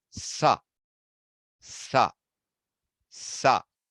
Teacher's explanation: It is ishad sprishta, very close to touching. But where is it closest to? The teeth. Not the palate, not the cerebrum, the teeth.